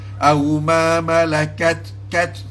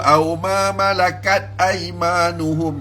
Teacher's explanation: Mesti kat ada hamas pada ta.